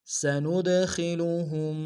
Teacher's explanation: نون کو دال کے سامنے لیں گے، دال حرف قلقلہ میں سے قلقلہ کریں گے، ہا کو میم ساکن کے سامنے آنا غنہ کریں گے۔